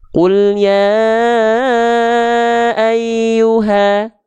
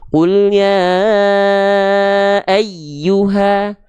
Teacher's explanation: Ketika dinabar, huruf ya-nya akan lebih menonjol, si nadanya lebih tinggi. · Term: nabr